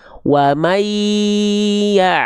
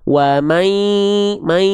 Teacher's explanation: masukkan ke hidung ya. Disengaukan ya disengaukan ya.